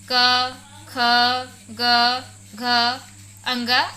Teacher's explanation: क ख ग घ अंग का उच्चारण करते समय हमारे प्राण वायु कि कंठ को स्पर्श करती है जिस कारण इन वड़ों को हम कंठस्त वर्णन भी कहते हैं